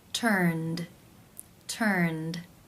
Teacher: The final sound in the infinitive is the n consonant sound, n, which is voiced. Therefore, it is case 2, where the ed is pronounced as the d sound.